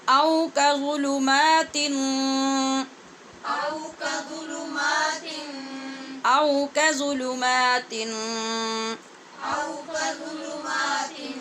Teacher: میم کے اوپر کھڑی زبر پڑھنی ہے اور شروع میں کاف پہ پڑی زبر ہے، اس کو لمبا نہیں کرنا.